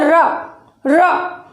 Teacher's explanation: इस रा का उच्चारण करते हुए हमारी जीभ जो है, हमारी मूर्धा जिह्वा हमारी घर्षण करते हुए निकलती है, और घर्षण के साथ में ही लुढ़कती भी है। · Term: लुंठित वर्ण